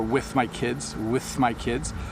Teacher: so the th blends into the next words